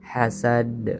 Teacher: ada huruf dal di akhir kalimat, ini disebut dengan qalqalah, harus dipantulkan suaranya. Hasad, qalqalahnya adalah qalqalah kubro.